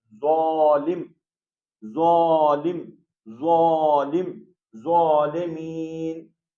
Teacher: اس کی آواز باہر نکل رہی ہے، ہاں، جیسے زال، ہاں، زال، زال، زال، ٹھیک. لیکن اس کی آواز جو ذا کی ہے وہ جو ہے اس کی آواز موٹی ہے اور اوپر اٹھ کے نکل رہی